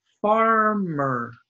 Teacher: So far is stressed, not mer. It's not farmer, it's farmer.